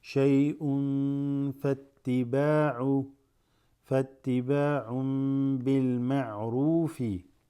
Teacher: tanween before the fa, ikhfa